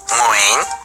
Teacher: All I know is it's gotta come from your uvula. You know, that punching bag thing at the back of your mouth?